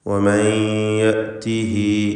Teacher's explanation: സാക്കിനത്തായ നൂനും ശേഷം യാഉം ഇദ്ഗാം ബിഗുന്ന ചെയ്ത് ലയിപ്പിച്ച് മണിച്ചുകൊണ്ട് ഉച്ചരിക്കേണ്ടതാണ്